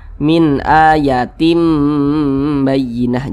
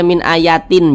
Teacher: cara membacanya itu dengan merubah menjadi huruf mim. Nah, makanya di sini ditulis nih mim kecil nih. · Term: iqlab